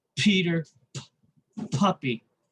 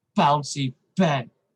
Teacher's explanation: you don't feel the vibration with the letter p as you do the letter b